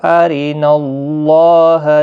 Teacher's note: نون کے اوپر جو زبر ہے، اس کی وجہ سے اللہ کا لام پر پڑھا جائے گا، اس کے اوپر کھڑی زبر بھی ہے، ایک الف کی مقدار کے برابر کھینچ کر بھی پڑھا جائے گا۔